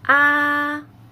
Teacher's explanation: the first tone of pinging when you pronounce it you should make your sound very flat